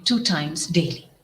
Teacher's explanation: In south, we say the words that are with T or D very strongly, like third, the th sound and the d sound are very very strong, and it needn't be. It needs to be very very soft.